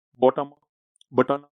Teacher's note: અંગ્રેજી ભાષામાં બોટમ બટન જેવા શબ્દોમાં અનુક્રમે મ અને ન શ્રાવ્યતાની પરાકાષ્ઠાનું વહન કરે છે